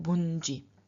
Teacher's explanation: we have a nasal added before the stem final stop. The stem final stop is a palatal, and therefore the nasal appears as the palatal nasal. And then we add an I at the end of the form, and so we get bunji.